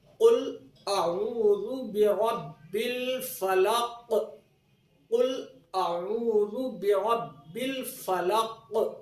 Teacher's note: فلق کے قاف پر تشدید نہیں ہے اور اس کو ساکن کر کے ہم اس پر ٹھہرے ہیں، یہاں پر قلقلہ درمیانی درجے کا قلقلہ ہوگا